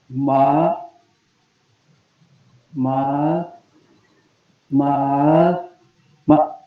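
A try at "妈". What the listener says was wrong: सिर्फ लास्ट आपने ठीक पढ़ा है, सिर्फ बाकी सब सेम है। दोबारा गौर करें, आपने पढ़ा है मा, मा, मा, मा, सेम। मा नहीं, मा स्ट्रेट, मा। थोड़ा सा इसको लेंथी करें, थोड़ा सा मा,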